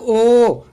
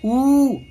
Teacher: अवृतमुखी यानी होठ गोलाकार नहीं होते, और इस वाली कंडीशन में होठ गोलाकार हो जाते हैं। जैसे ओ तो वृतमुखी हो जाएगा, होठ गोलाकार हो गए। · जैसे ओ तो वृतमुखी हो जाएगा, होठ गोलाकार हो गए। ऊ भी बोलेंगे तो अब होठ गोलाकार होंगे